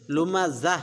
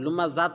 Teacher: আর হলো লুমাজা, এখানে যে আমি ওয়াকফ করছি, ওয়াকফ করার কারণে তাটা হা হয়ে যাবে, লুমাজা হবে, লুমাজাত হবে না, লুমাজা হবে।